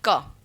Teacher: यह जो इसके उच्चारण स्थान है क या कु वर्ग उसको हम कंठ से उच्चारण करते हैं